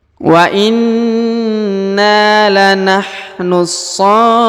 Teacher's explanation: huruf fu lalu dipanjangkan 2, 4 atau 6 harokat karena di depannya terdapat waw sukun ya, lalu huruf na yang di ujung disukunkan ya.